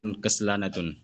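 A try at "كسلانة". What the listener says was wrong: কাসরা নাতু হবে, কাসরা নাতুন না।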